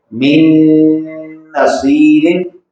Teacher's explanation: पहला नून उसमें मुदगम होकर पढ़ा जा रहा है गुन्ना के साथ